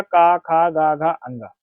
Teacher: का वर्ग के जितने भी वर्ण है उनका उच्चारण स्थान क्या है कंठ